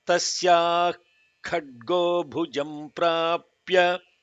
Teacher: when the Visarga in Tasyaha was followed by this Mahaprana Kha, the Kha has an additional holding on it